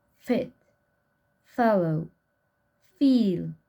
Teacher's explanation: Spelling system of labiodental fricative voiceless. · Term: Fricatives